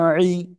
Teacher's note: আইন জের ই, ই গলা চেপে